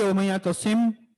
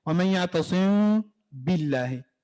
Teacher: ہونٹوں کو تھوڑا سا ٹچ کر کے وائبریٹ کریں گے, اور پھر جب ہم با پڑھنے کا ارادہ کریں گے پھر ہونٹ ملا کے زور سے با ادا کریں گے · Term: اخفاء